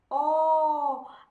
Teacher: Môi của các bạn hơi chu về phía trước, tròn, chu về phía trước, và lưỡi thì thu về phía cuống họng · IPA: /ɔ:/